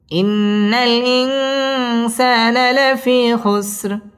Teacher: ইন্না ওয়াজিব গুন্নাহ করে পড়তে হবে